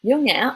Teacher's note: You start low, go up, go down, go back up. Dấu nhã almost sounds like 2 syllables.